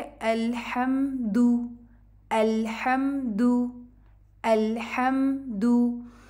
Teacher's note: आपने इसको लंबा नहीं करना, दू नहीं पढ़ना, ये 1 काउंट है। अलहम्दु, इसको अल नहीं पढ़ना, अ नहीं पढ़ना, जिस तरह जो स्लांट सिखाई हुई है उसी तरह से उसको अप्रोप्रिएटली पढ़ना है ताकि वो ठीक से उसकी आवाज़ है।